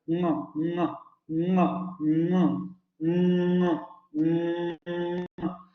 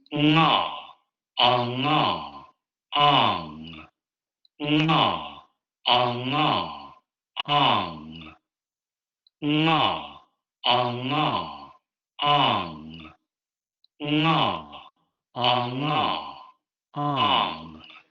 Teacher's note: lo que hay que hacer es mantener el cierre de la cavidad oral y sacar el aire por la cavidad nasal. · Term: Velar nasal sonoro